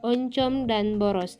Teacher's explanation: huruf o kapital yang bercirikan agak rendah belakang dan bulat